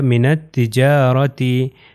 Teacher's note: الف لام یہاں پر نہیں پڑھا جائے گا، نون جو ہے وہ تے سے مل جائے گا، ہو جائے گا من التجارتی.